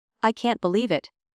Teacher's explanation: If you say it with excitement, I can't believe it. The pitch rises and your voice sounds bright.